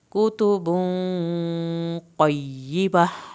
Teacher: क़ाफ को पुर करना है आपने, या को सख्ती नहीं दिखानी यहाँ पे। क़य्यिमा आखिर में हा की आवाज़ निकलेगी।